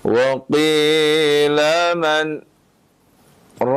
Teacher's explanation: Sakta yaitu berhenti sejenak, ya, sekitar 2 harokat tanpa mengambil nafas.